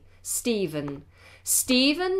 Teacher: has a pH spelling sometimes it's spelled with a V but whether it's pH or V we pronounce it Stephen with a V